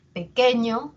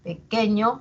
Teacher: la e va a ser más intensa pequeño la e va a tener un tono más alto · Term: sílaba tónica